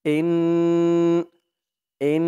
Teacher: ওয়াজিব গুন্না হবে এই যে হরকতের পরে নুনের উপরে তাসদিদ আসছে